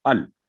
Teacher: आगे है अल्हम्दु, तो अल कुरान करीम में जहां भी लाम पर जज़म होगी, उसको कभी उसके ऊपर स्टे नहीं करना, उसकी आवाज को लंबी नहीं करना, अल नहीं करना, हमेशा लाम जज़म 1 सेकंड, 1 काउंट, सिर्फ अल, फिनिश।